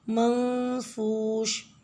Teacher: آیت نمبر 5 میں وَتَكُونُ الْجِبَالُ كَالْعِهْنِ الْمَنْفُوشِ، عین اور ہا کو آپ نے ملا کے عین کا مخرج اچھے سے ادا کرنا ہے۔ منفوش میں آپ نے نون ساکنہ پہ اخفا کرنا ہے